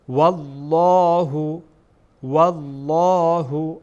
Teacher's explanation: لام جلاله پر میشه در اینجا